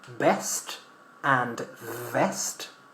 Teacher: in English, we need to make sure that V stays labial, labiodental, sorry, V, with your lips and your teeth.